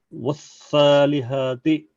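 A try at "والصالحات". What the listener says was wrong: मोटा पढ़ो भाई, स्वाद को मोटा पढ़ो।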